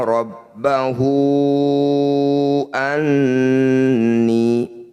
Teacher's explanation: Cara bacanya hu yang bertanda layar panjangkan 5 harokat. Rabbahu anni, nun bertasydid disebut bacaan gunnah musyaddadah. Bunyi nun didengungkan, ditahan 2 ketukan atau 2 harokat.